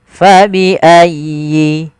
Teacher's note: Lafal fa, alirkan nafasnya fa.